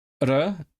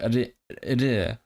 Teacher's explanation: you have the r, and then you have the soft version of it, the palatalized one